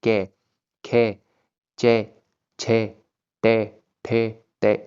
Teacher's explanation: आपको कोई भी कंपन महसूस नहीं हो रही होगी, क्लियरली बोले जा रहे होंगे। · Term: अघोष वर्ण